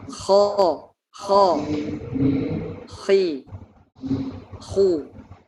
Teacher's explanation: Isti'la di sini lidah terangkat ke pangkal lidah, terangkat ke langit-langit mulut, terangkat ke atas, sehingga karena pangkal lidahnya terangkat, otomatis suaranya menjadi tebal